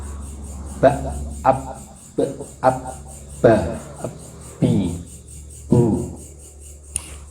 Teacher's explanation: Tanpa merekatkan 2 bibir tidak mungkin bisa berbunyi ba. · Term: makhrajnya ba berada di bibir